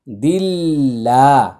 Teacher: আল্লাহ শব্দের পূর্বে জের আসছে এটা পাতলা করে উচ্চারণ করতে হবে